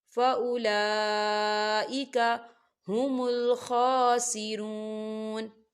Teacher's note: واو ساکن ہے، واو ساکن سے پہلے پیش ہے، واو مدہ ہو رہا ہے، اسے بھی 2 حرکت کے برابر کھینچ کے پڑھا جائے گا